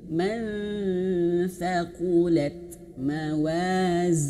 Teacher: Huruf tha sudah persiapan ke huruf tha, maka langsung tha itu kan di sini ujung lidah menyentuh ujung lidah menyentuh ujung gigi seri atas ya. Nah, lidahnya dikeluarkan sedikit begitu ayah bunda ya. Nah, lidahnya sudah di situ.